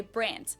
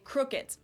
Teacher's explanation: Germans usually pronounce a d at the end of a word as a t